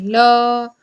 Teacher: ठीक है, जैसे फॉर एग्जांपल के लिए आप लोग अगर ल का उच्चारण करें ल, तो कहीं ना कहीं देखेंगे कि मुख की जो हवा है वो दोनों तरफ से निकलती है। · तो याद रखिए पार्श्विक व्यंजन वह व्यंजन होते हैं जिनके उच्चारण में जीभ तालु को छूती है लेकिन हवा, हवा जो होती है वो मुख के दोनों तरफ से निकल जाती है। जैसे फॉर एग्जांपल बताएं तो हिंदी में जो ल है, ल वह क्या है, पार्श्विक व्यंजन है हिंदी में।